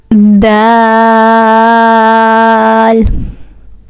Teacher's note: This Dal originates with the tip of the tongue touching the gums of the upper 2 front teeth. And also we stretch this Dal for 5 seconds.